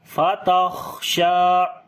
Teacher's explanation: خا کو موٹا بھی پڑھیں گے اور صفت ہمس بھی کریں گے، سانس جاری ہوگا ، شین کو لمبا کریں گے، کھڑی زبر ہے اس کے